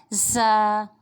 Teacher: viewers یہ سیٹی کا حرف ہے، اس کو ہم سختی اور جماؤ کے ساتھ پڑھیں گے اور پڑھتے وقت ہلکی سی سیٹی کی ادائیگی ہوگی